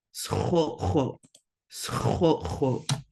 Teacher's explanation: So we've got two glottal stops here. So you're gonna like be pausing in the middle.